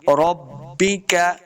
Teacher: کے ساتھ ملانا ہے، ربک، بعض لوگ پڑھتے ہیں ربکا، ربکا، ربکا نہیں کریں گے، با زیر بی، عربی لہجہ کے اندر پڑھیں گے